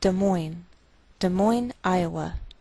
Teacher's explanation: Note that we treat the name of this capital like one word, and the greater stress is on the second part